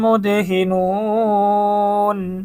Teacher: 3টি মদের হরফের একটি হচ্ছে পেশের পরে ওয়াও সাকিন। মদের হরফের পরে আমরা থেমে গেছি, ওয়াকফ করে দিছি, এজন্য এটা সূত্র অনুযায়ী মধ্যে আরজি হয়ে গেছে, 3 আলিফ টানতে হবে।